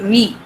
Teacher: The teeth touch the lip, lower lip.